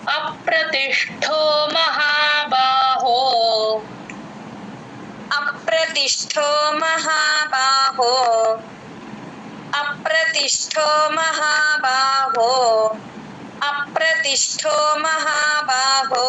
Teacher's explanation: ఆ కి ప ని జాయిన్ చేసి చెప్పాలి రకారం ఉంది కాబట్టి అప్రతిష్టో ఇక్కడ ష కింద ఉన్న ట ఒత్తు ఠ కంఠం అంటాం కదా కొంచెం గట్టిగా చెప్తాం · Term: మహాప్రాణం